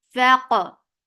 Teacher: Give hams on fa for fatha upon jaws attached with qaf. Qaf will get sifa of qalqala, and it is heavy.